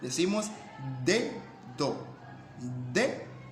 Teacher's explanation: Por ejemplo, en la palabra dedo, la primera letra, el fonema D, es oclusiva dental